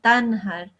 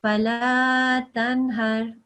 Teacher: you won't make a nasal sound, you'll make a full noon sound because there is a ha after the noon